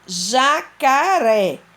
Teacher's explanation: ré é a sílaba tônica. E já e cá são sílabas átonas, porque são sílabas que possuem o som mais fraco dentro da palavra.